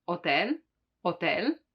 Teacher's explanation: the h is always mute in italian so you don't pronounce it like in hotel hotel or as